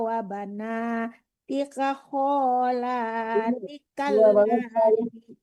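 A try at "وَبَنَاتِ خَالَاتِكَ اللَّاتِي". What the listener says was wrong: Ti yang kedua panjang, Bu. Ti yang pertama enggak. Di khalanya tadi salah.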